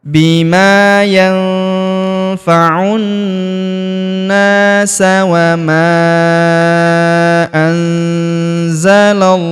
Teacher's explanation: Perhatikan huruf la langsung disambung ke huruf lam pada lafaz Allah